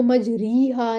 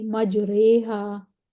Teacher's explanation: इसको मजरीहा नहीं पढ़ेंगे, थोड़ा सा इमाला कर देंगे और बड़ी ये लगा देंगे मजरेहा।